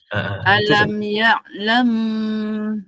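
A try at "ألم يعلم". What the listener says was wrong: Buka sikit. Tu macam bunyi rapat sangat.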